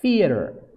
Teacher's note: Perceba que a palavra theater aqui, gente, não é theater. Esse TH tem um som diferenciado, um som de F entre os dentes.